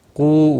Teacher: واو مدہ ہے، ایک الف کے برابر کھینچ کر پڑھنا ہے۔